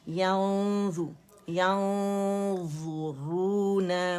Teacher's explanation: अब इस नून को हमने छुपाना है और मोटाई से छुपेगा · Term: इख्फा